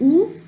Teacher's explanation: It is back, close, and rounded vowel.